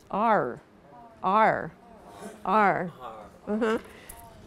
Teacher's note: starting out with ah and er. So you say both sounds in order to say this letter name.